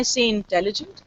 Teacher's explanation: I'm swallowing the first I